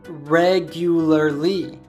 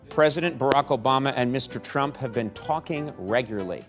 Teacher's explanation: so it goes from being a four syllable word to just two syllables